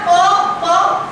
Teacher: ओठ लागल्याशिवाय प निघणार नाही